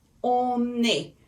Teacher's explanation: Because A starts with a vowel, which is the vowel E, and on ends with the N. So we connect these two together and it makes a one word. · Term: liaison